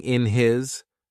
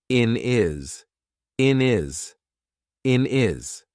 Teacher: we've taken away that H completely and we've made it into one word